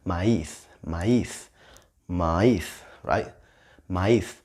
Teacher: It's got the stress in the I, right?